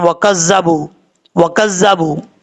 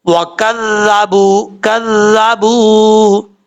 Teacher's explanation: یہ ذال بغیر سیٹی کے پڑھا جاتا ہے. اگر کوئی سیٹی کے ساتھ پڑھتا ہے تو غلط پڑھتا ہے.